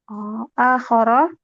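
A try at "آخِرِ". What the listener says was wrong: Bukan akhara. Kha-nya kasrah. Huruf kha-nya kasrah. Ro-nya yang fathah mansub. Akhirah. Akhir. Yang akhir maksudnya bukan yang lain. Bukan akhara. Akhara kan yang lain. Kitabun akhara. Ini yang akhir.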